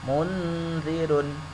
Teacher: yang tepat ketika membaca nun mati ini sudah persiapan masuk ke dal. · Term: ikhfa